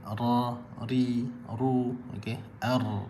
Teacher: bahagian hujung lidah bertemu bahagian lelangit atas, yakni langit yang hampir ke tengah lelangit, keluar daripadanya huruf ra